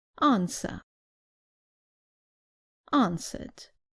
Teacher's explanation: Remember that in British English, the R at the end is not pronounced.